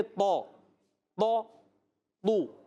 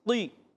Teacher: طا، طا، طو موٹے زیادہ ہیں، طی تھوڑا کمزور ہو جاتا ہے، تھوڑا سا کمزور ہوتا ہے.